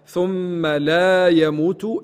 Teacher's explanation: الميم المشددة الغنة فيها لابد من غنتها